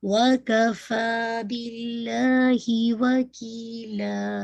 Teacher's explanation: تو make sure فا کو آپ نے 2 کاؤنٹ پڑھنا ہے، باللہ میں لام جلالہ لائٹ رکھیے گا اور ہا کی کسرہ بہت شارپ رکھیے گا